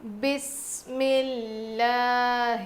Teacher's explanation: یہ ہا ہے جو حلق کے نیچے والے حصے سے ادا ہوتی ہے